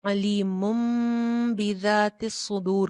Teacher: आपको बा नजर आ जाए लेटर बा तो फिर क्या होगा नून की जो आवाज होगी वो मीम में चेंज हो जाए जाएगी फिर हम नून नहीं पढ़ेंगे बल्कि मीम पढ़ेंगे · तो जो तनवीन के अंदर का हिडन नून था वो क्या हुआ मीम में चेंज हो गया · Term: इकलाब